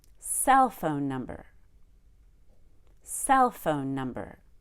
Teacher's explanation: so it's like having high low medium low